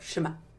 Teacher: Ashkenazi Jews don't pronounce ayin. It's a silent glottal stop.